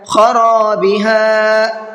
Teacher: فی خرابہا، فا کو بھی کھینچ کر کے پڑھنا ہے اس لیے کہ یہاں پر یا مدہ کا قاعدہ ہے۔ خرابہا، را کو بھی کھینچنا ہے اور ہا کو بھی کھینچنا ہے